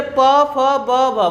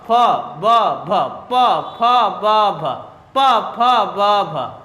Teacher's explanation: तो प फ ब भ जब बोल रहे हैं तो आपके दोनों जो ओठ है, प दोनों जो ओठ है आपस में टच हो रहे हैं, फ दोनों ओठ आपस में टच हो रहे हैं, तो यानी देख रहे हैं कि प फ ब भ को बोलने के लिए आपके दोनों ओठ आपस में टच हो रहे हैं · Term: ओष्ठ